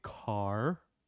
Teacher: you make a pout and then you roll the r you roll the tongue in your mouth like this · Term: American are